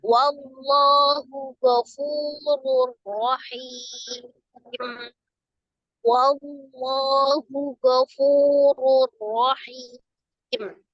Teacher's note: Fu-nya adalah mad tabi'i waw. Ada waw sukun sebelumnya dhamma di huruf fa, maka fu dibaca mad tabi'i, 2 harakat ya.